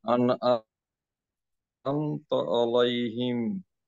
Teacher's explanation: সিরাতাল্লাযীনা আন'আমতা আলাইহিম। আন'আমতা, আইনটা গলাটা চেপে পড়তে হবে।